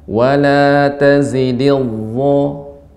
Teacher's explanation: punggung ujung lidah, ya, punggung ujung lidah mengenai gigi seri atas